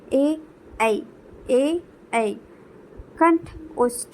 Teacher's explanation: कंठ गले और तालु से दोनों को टच करते हुए जिन वर्णों का उच्चारण होता है उनको हम लोग कंठ तालव्य स्वर में रखते हैं